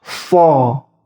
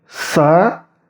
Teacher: Jadi berbeda dengan sa. Ini so terdengar tebal karena lidahnya diangkat mendekati langit-langit. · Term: huruf shad